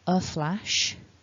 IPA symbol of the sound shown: ə